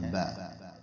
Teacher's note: با کا جو مخرج ہے یہ ہونٹوں کے باہر والی سائڈ جو ہے نا یہ خشک ہوتی ہے، ہونٹوں کے اندر والی سائڈ جو ہے وہ تر ہوتی ہے. جو تر جگہ ہے یہ آپس میں ٹکراتی ہے با. اسی طرح آگے ورڈ آتا ہے تا.